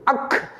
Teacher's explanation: அது ஒரு மாத்திரை நேரம் கூட ஆகாது அக் உள்ளுக்குள்ளே அமுங்கி விடுகிறது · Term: ஆயுத எழுத்து